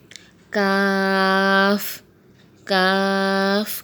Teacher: کاف کا بھی یہی مخرج ہے جو قاف کا ہے یعنی کوے کے قریب سے ادا ہوتا ہے